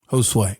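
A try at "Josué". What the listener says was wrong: No, it's you say it with more of a Z and it's more of an S.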